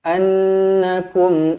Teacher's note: Nun yang bertanda sabdu wajibul gunah dengung dua harakat